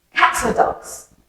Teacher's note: there's kind of a er sound in the middle between cats and dogs